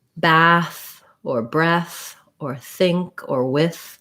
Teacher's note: my tongue is between my teeth the air is flowing it's that th sound but there's no vibration in my throat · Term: voiceless th